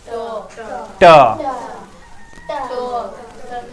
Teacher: मूर्धा, जीभ को मोड़ के बोलते हैं।